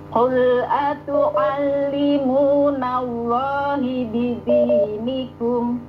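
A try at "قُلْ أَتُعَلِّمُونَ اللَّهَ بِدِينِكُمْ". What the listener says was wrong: Loha ya, diulangin, jangan hi. Atu'allimunallaha.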